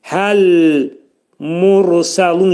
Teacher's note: Mursəlun dedikdə ra hərfi qalın.